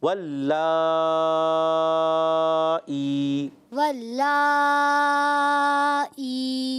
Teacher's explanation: یہ لام اللہ کا لام نہیں ہے، آپ نے موٹا نہیں کرنا